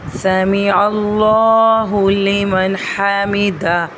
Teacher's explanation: لام سے پہلے والے عین کے اوپر زبر ہے، تو ہم یہاں پر اللہ کے نام کو موٹا پڑھیں گے۔ سمیع اللہ لمن حمدہ، یہاں پر بھی ہا کا دھیان رکھنا ہے، حلق سے ادا کرنا ہے۔